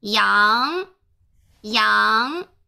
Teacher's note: 它就是一个上扬的，它有从低到高的这么一个趋势